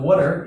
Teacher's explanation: they don't pronounce the R sound if it's not followed by a vowel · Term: British accent